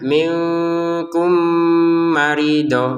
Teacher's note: Kafnya 2 harokat, nun sukun bertemu kaf lagi, ya samar lagi. Minkum, mim sukun bertemu min dimasukkan ya, mim pertama kepada mim yang kedua dengan dengungan